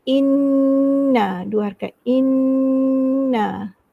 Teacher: nun bertajdid ni mesti gunnah, dengung, wajib gunnah lah.